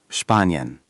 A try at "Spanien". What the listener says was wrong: Perfect. That one's much easier.